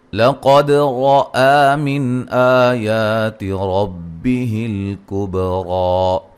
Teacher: قاف کو موٹا ادا کریں گے، دال پہ قلقلہ ہے، را کو موٹا ادا کریں گے، مد اصلی ہے.